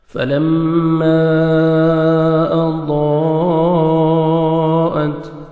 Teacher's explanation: اسی کلمہ میں حروف مدہ کے بعد حمزہ آ رہا ہے، تو 4 سے 5 سیکنڈ آپ نے مد کرنی ہے، اس کو مد واجب کہتے ہیں۔